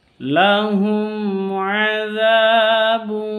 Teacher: mim sukun berjumpa dengan Ain bacanya jelas karena izhar syafawi